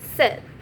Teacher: The next one is the sound uh the h sound is known as a short front closed vowel. To produce this sound your tongue should be in high and near front of your mouth but not as high or tense as in the long vowel. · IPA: /ɪ/